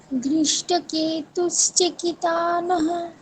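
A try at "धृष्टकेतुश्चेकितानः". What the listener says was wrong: চে একারটা দীর্ঘ, কয় ইকারটা হ্রস্ব। চয় একারটা দীর্ঘ এবং কয় ইকারটা হ্রস্ব। ধৃষ্টকেতুশ্চেকিতানः বলুন। হ্যাঁ, এটা ভুল হয়ে যাচ্ছে আপনাদের। ধৃষ্টকেতুশ্চেকিতানः বলুন। ধৃষ্টকেতুশ্চেকিতানः। হ্যাঁ, এই ভুলটা কিন্তু সবারই হয়, ঠিক আছে? সবাই খেয়াল রাখবে। এই যতদিন আমি মানে যতজনকে এই শ্লোকটা পড়িয়েছি সবাই এই শ্লোকটা ভুল করে। চেকি চয় একারটা কেউ টানে না, চয় একারটা দীর্ঘ করতে হবে। ধৃষ্টকেতুশ্চেকিতানः, বলুন আবার।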